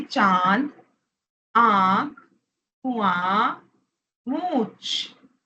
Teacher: इन सब में हम मात्राओं के साथ स्वरों के साथ नाक से बोल रहे हैं · अनुनासिक स्वरों के साथ बोले जाते हैं नाक से आवाज आती है